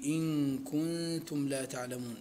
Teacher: النون الساكنة قبل الكاف في إن كنتم لا تعلمون، وكذلك النون الساكنة قبل التاء حكمهما الإخفاء مع الغنة. والمد في تعلمون مد عارض للسكون، فيه وجوه المد الثلاثة من قصر وتوسط وإشباع.